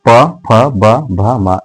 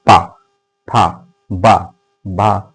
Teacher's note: तो जैसे ही प बोलेंगे आपके दोनों होठ आपस में क्या हो जा रहे हैं दोस्तों? टच हो जा रहे हैं। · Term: ओष्ठ व्यंजन